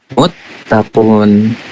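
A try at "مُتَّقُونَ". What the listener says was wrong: Iya, jangan dimatikan harokatnya. Harokatnya jangan dimatikan, dihidupkan semuanya. Kayak tadi muslimuna, ini kan nggak ada yang dimatikan, bukan muslimun. Ya walaupun nggak salah cara bacanya, cuman dihidupkan aja semuanya biar kelihatan gitu ya.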